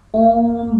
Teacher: ओम जो शब्द है उसमें आने वाले उ वर्ण का उच्चारण करने में 2 मात्रा से अधिक का समय लगता है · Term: प्लुत स्वर